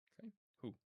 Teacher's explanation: the aleph is quiescent; it's silent. It's lost its glottal sound.